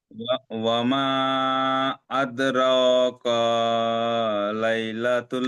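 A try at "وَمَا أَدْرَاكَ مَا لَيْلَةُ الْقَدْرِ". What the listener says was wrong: কারটা টান হবে না, কামা, মিমটা টান হবে, মিম আলিফ লাম মা।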